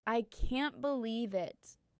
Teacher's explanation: Say it with excitement, I can't believe it. Your voice goes up and down dramatically. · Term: intonation